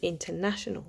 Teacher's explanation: il y a l'accent principal sur le na et un petit accent secondaire au tout début du mot, international.